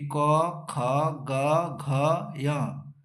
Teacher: यानी अगर short form में याद रखें, अकुह विसर्जनीय नाम कंठा, यानी अ आ का उच्चारण स्थान कंठ है और क वर्ग का उच्चारण स्थान कंठ है